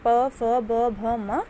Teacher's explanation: प फ ब भ म, ये सभी आएंगे हमारे औष्ठ्य के अंतर्गत